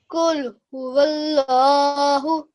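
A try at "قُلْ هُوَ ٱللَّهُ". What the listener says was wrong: Well done. Don't forget this is a thick and heavy sound here, yeah?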